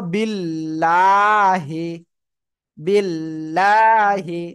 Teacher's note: আল্লাহ শব্দের লাম এর ডাইনে এই যে জের রয়েছে এজন্য আমরা চিকন আওয়াজে পড়বো